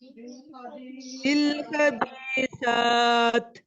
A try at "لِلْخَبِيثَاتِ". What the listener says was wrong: यहाँ पर आप मत करेंगे, ठीक है, क्योंकि खड़ी जबर है, उसके बाद जज़म आ रही है, तो हम इसको एक्स्ट्रा लॉन्ग करेंगे. लिलखबीसात